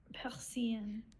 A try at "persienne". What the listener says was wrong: Persienne. It's longer and louder. Persienne.